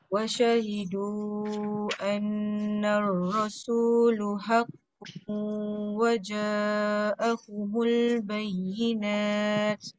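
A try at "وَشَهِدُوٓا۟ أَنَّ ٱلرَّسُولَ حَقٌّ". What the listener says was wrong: La tu. Lam baris atas. Akak sebut uh, annar rasulu haqqun. Haqqun dengung.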